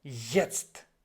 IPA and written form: ˈjɛtst (Jetzt)